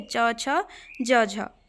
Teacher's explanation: मुख विवर में हवा के रुकने के बाद घर्षण के साथ बाहर निकलने को स्पर्श संघर्षी कहते हैं